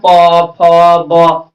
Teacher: पवर्ग का उच्चारण स्थान ओष्ठ होता है। इस सबको ओष्ठ से बोला जाता है। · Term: ओष्ठ वर्ण